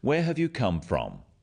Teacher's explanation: notice also the falling tone with these questions where have you come from this makes the question sound friendly